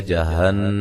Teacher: نون مشدد پہ غنہ ضروری ہے